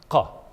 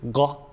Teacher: In Bedouin varieties, this becomes voiced, either the direct voiced equivalent of qa, which is ga, or a close sound g.